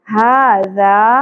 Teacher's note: یہاں کھڑی زبر ہے اور یہاں پہ الف حرف مدہ ہے دونوں کو ایک ایک الف کے برابر کھینچیں گے ھذا اس ذال کو نرمی سے ادا کرنا ہے ٹھیک ہے